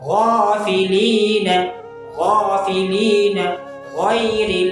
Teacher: وہاں سے دو حروف ادا ہوتے ہیں غین اور خا، غین اور خا موٹے حروف میں سے، حروف مستعلیہ میں سے، تو ان کو ہم موٹا پڑھیں گے، کبھی بھی باریک نہیں پڑھیں گے، کیونکہ یہ موٹا پڑھے جانے والے حروف ہیں، تو ٹھیک ہے۔